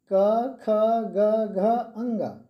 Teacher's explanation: जब हम क ख उच्चारित करते हैं तो इसकी जो स्वर है वो गले से निकलती है, कंठ से निकलती है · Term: कंठ्य व्यंजन